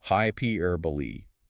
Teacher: It's pronounced hyperbole with that final e clearly sounded out.